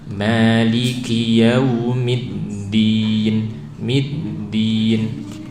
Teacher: Mim kasroh, jelaskan i-nya, kemudian masuk tasdid ke dal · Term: tasdid dal